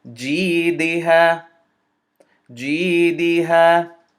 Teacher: I'm sorry, not jim sukun, jim's kasra. Jim maksura is going to be extended to two movements because of the ya sukun, and the ha fatha is going to be extended to two movements because of the alif sukun.